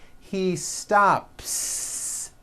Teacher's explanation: the S you add also remains unvoiced. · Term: unvoiced S